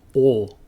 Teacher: The second way is an open O, like in the Portuguese word sorte, o. In the case of the open O, you can also think of it as being like the O you hear in the English word quarter, quarter, o.